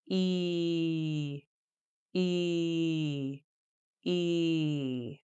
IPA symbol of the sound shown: i: